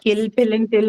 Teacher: all three, kill, pill, and till, are going to have aspiration